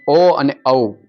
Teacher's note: ઓ અને ઔ કંઠ અને હોઠ બે નો ઉપયોગ થાય છે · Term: કંઠયોષ્ઠય